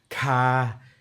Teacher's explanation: So you've got breathy voice, so aspirates, so ka.